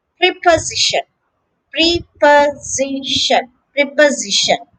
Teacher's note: The stress is on the third syllable